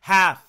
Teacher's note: You can hear the L. It's very slight